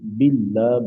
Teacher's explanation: لفظ اللہ سے پہلے با کے نیچے زیر ہے، قاعدے کے مطابق اس کو مطلب باریک پڑھیں گے تو باللہ بن جائے گا.